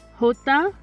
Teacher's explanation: hota is similar to the english h but it can be a bit more harsh or breathy